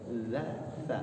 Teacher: Za ujung lidah, za sama sa satu tempat ya nih.